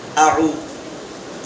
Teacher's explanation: واو ساکن سے پیش ہو تو وہ مدہ ہوگا، تھوڑا کھینچ کر پڑھے، معروف پڑھے